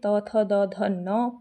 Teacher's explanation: त वर्ग का उच्चारण दंत से होता है